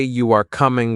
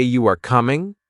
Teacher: if you say you are coming with a flat tone, it is a statement. But if you say you are coming with a rising tone, it is a question. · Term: intonation